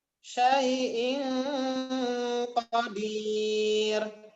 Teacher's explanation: Kurang ditahan, ikhfa hakikinya dengung.